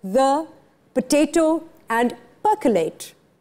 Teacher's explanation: Schwa is the term for the er sound you hear in the words the, potato, and percolate.